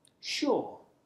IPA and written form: ʆɔː (sure)